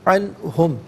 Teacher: نون ساکن کے بعد ہا حرف حلقی ہے تو نون ساکن کو اظہار کے ساتھ پڑھا جائے گا، غنہ یا اخفا نہیں کیا جائے گا